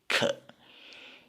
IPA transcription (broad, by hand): kʰ